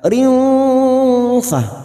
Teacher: Kasrah tanwin bertemu fa ikfa hakiki kita samarkan bunyi kasrah tanwin 2 atau 3 harokat.